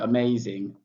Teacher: The stress on the may that's what it means.